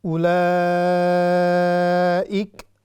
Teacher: مد متصل، یعنی اس کو ہم سٹریچ کریں گے 6 سیکنڈ، 6 حرکات تک بھی کر سکتے ہیں۔